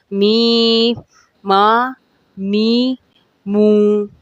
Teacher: حروف میم بھی دونوں ہونٹوں کے ملنے سے ادا ہوتا ہے، لیکن اس میں ناک سے آواز نکلتی ہے